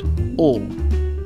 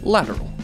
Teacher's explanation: A lateral approximant, which is a particular kind of approximant in which air is allowed to flow around the sides of the tongue but not directly over it